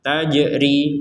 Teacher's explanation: jim sukun harus kita pantulkan.